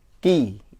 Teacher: Kalau kaf agak seperti ada udaranya karena memang memiliki sifat hamas. Sementara qaf itu tidak ada sifat hamas, jadi harus bersih